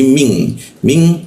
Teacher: Hijau itu ikfa. Ikfa itu artinya didengungkan, ditahankan. Jadinya bukan min, tapi jadi eng dia ya.